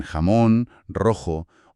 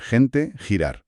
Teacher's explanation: Es velar sorda. La parte de atrás de la lengua se acerca al velo del paladar. Es el sonido fuerte de la J, como en jamón, rojo, o de la G antes de I, como en gente, girar.